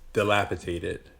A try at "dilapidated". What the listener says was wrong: Because pronunciation matters. You said tated, and it's dated. D versus T. Dilapidated.